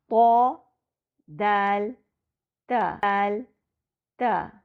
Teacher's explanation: طرف اللسان کا اگلا مخرج 3 حروف طا، دال اور تا کے لیے ہے، یعنی اس مخرج سے 3 حروف طا، دال اور تا ادا ہوتے ہیں۔ یہ حروف زبان کی نوک کے اوپری حصے اور اوپر کے سامنے کے 2 دانتوں کی جڑ سے ادا ہوتے ہیں۔ آگے کے 2 دانتوں کی جڑ یعنی مسوڑوں کے اوپر کی نرم جگہ، جہاں دانت مسوڑوں سے مل رہے ہوتے ہیں۔